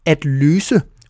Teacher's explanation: The Danish S is always pronounced like the English double S. It's s, always, even when it's between two vowels